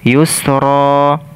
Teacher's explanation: ketika kita berhenti maka tanwin ini tidak dibaca kembali tetapi kita ganti dengan memanjangkan dua harakat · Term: mad iwad